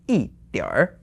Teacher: because we have 点 here which is the third tone, so together with 一, you have to change the 一 to the fourth tone.